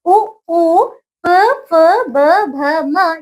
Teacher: ये ओष्ठ है। इनको हम ओष्ठय कहते हैं